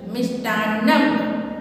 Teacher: मिष्टान्नम, आधा स है इसलिए स ट संयुक्त है तो जल्दी से बोलना है मिष्टा, और न संयुक्त है इसलिए न पे जोर डालना है, थोड़ा सा जोर से बोलना है।